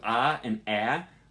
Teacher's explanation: with ah and ah, your tongue is going to be at the lower portion of your mouth